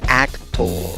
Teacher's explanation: ofrece una segunda pronunciación de la segunda sílaba de esta palabra, no con la vocal schwa, sino con una O y un puntito arriba, cuya pronunciación es O.